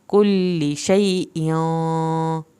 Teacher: कुल्ली पे लाम की ज़ेर को लंबा नहीं खींचना। शैइय्यन, यहाँ पे शई खींच के पढ़ा जाएगा, इयों पे भी देर लगेगी क्योंकि इख्वा हो रहा है।